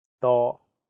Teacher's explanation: The first character is in high flat tone, first tone.